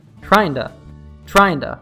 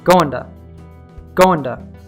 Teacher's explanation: the flap T is preceded by an N sound · Remember the ing in words like trying and going are often reduced to tryin' and goin' in spoken English.